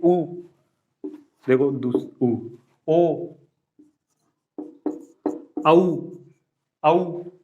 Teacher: जिसमें अपना मुख वृत्त की तरह बन जाए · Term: वृत्ताकार